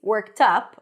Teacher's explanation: Worked up stresses on the second part of the phrase, worked up, on the word up.